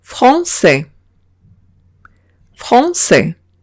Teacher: tengo una A y una I que he pronunciado como una E.